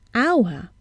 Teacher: We see an H, but we hear a vowel sound at the beginning, hour, and not hour.